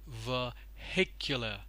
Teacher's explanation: the stress you can see is on the second syllable